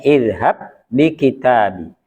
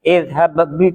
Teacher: di awal ayat 28 kalau sendirian misalnya izhab ada qalqalahnya tapi karena disitu di depannya bertemu dengan ba atau bertemu dengan huruf yang sama maka qalqalahnya hilang